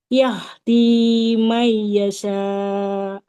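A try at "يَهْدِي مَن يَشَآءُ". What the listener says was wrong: Nun sukun bertemu. Ya, maka ini ditahan dulu. May yasha. Nah, kemudian ini huruf shin ya, bukan sa. Nggak boleh sa. May yasha.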